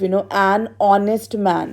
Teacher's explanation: The word is starting with H, but H is silent and giving us the sound of awe, nest, awe.